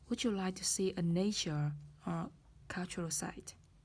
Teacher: sự lựa chọn đầu tiên được nhấn với âm vực, với cái ngữ điệu đi lên, và sự lựa chọn thứ hai đằng sau or, cultural site, thì được nói với lại ngữ điệu đi xuống